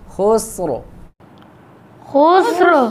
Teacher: جب ہم ملا کے پڑھیں گے پھر را باریک ہوگی. جب وقف کریں گے تو را ساکن، ما قبل سین ساکن اور ما قبل پیش ہے تو را کو موٹا کر کے پڑھیں گے.